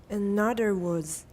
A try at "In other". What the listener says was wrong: The D, it's not a D, I'm sorry, it's a the. Try it again.